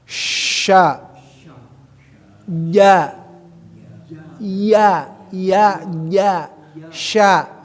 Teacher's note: kalau sya ya itu bukan ujung lidah, tengah-tengah lidah. Ya, bertemu dengan langit ke atas